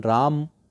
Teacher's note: म में जो अ की ध्वनि है वह ध्वनि बोलते समय गायब हो गई और उसका उच्चारण राम की तरह होने लगा इसी तरह जनता